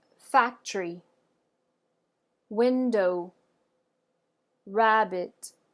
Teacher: as you can hear, the first syllable is slightly emphasized. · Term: stress